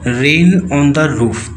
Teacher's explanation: The very title, with the repetition of the sounds R and N and the long vowels AI and O, imitates the rhythmic pitter-patter of rain on a tin roof